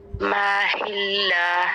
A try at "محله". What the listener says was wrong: میم کو لمبا نہیں، محلہ نہیں، محلہ.